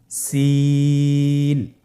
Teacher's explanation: সিন হরফটি উচ্চারণ ক্ষেত্রে অবশ্যই তিন আলিফ টেনে পড়তে হবে। সিন হরফটি বারিক হরফ পাতলা করে উচ্চারণ করতে হবে।